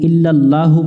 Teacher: আল্লাহ শব্দের লামকে মোটা করে পড়তে হবে, অর্থাৎ এটা জবরে আকার পড়া যাবে না।